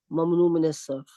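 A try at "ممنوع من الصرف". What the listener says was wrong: मिनस्सर्फ, मिन की वजह से ज़ेर आ जाएगी मिनस्सर्फ।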